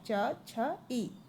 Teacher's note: तो च भी तालु से निकलता है। छ ये भी तालु से है और ई ये भी तालु से।